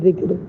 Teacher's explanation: اب دیکھیے اگر ہم وقت کی صورت میں ذکری کو ذکر پڑھیں گے، را بھی ساکن ہو گیا، کاف بھی ساکن ہے، لیکن دال کے نیچے زیر ہے، اس لیے یہاں پر ذکر کو ہم باریک پڑھیں گے